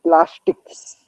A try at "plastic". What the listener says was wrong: There is no S sound after plastic. Remember that. So you have brought S sound. Remember, you don't have to bring S sound if there is no S sound.